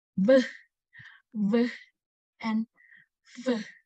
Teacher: to produce the labiodentals, the upper front of teeth are brought into contact with the lower lip